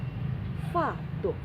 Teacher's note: fa itu pasti keluar aliran nafas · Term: hamas